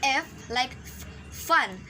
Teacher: your lower lip and upper teeth are blocking the air before you release the sounds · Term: fricative